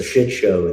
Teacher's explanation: so shit show, the stress is on the first syllable